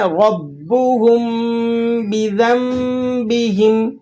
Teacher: نون ساکن اور اس کے بعد با ہے تو یہاں اقلاب ہو رہا ہے